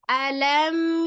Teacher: lam sukun itu juga dia setengah mengalir ya jadi jangan ditahan tidak juga jangan iya jangan juga jangan ya Tapi tetap mengalir